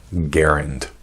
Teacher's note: Initial G hard as in go, first A short as in Harry, second A somewhat more obscure as in errand, accent on the first syllable